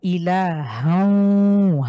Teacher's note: হাকে আমরা ওয়ার সাথে মিলিয়ে পড়ব। সুতরাং এখানে তানভিনের আলাদা করে উচ্চারণ হবে না।